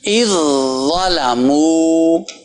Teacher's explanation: اذ ظلموا، یہ آواز پہلے جا کے زا میں ٹک رہی ہے، یہ نہیں کہ زال کو پڑھا جا رہا ہے. زال زا میں ختم ہو گئی، مل گئی، مکس ہو گئی